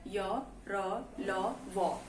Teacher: जीभ बहुत हल्के से कहीं पर टच होती है और तुरंत वापस आ जाती है, वो हमारे क्या होते हैं, अंतस्थ व्यंजन।